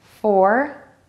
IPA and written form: fɔr (FOUR)